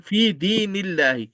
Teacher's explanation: Lame Jalala will be thin because it is followed by kasra on the previous letter.